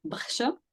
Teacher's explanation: so the ch becomes more like a sh sound